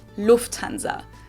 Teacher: so the emphasis on the first syllable · In English, people usually say Lufthansa, but in German, we say Lufthansa. So the emphasis is on the first syllable.